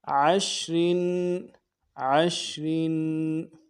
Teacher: را دو زیر تنوین ہے، غنہ کرنا ہے، را کو باریک پڑھنا ہے